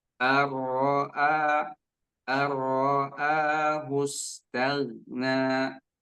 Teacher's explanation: Ro-nya tidak panjang. Ya. Ro-nya tidak dipantulkan.